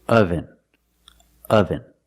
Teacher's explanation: The first syllable makes a sound like cup and up. This is a relaxed sound. Your mouth is almost closed.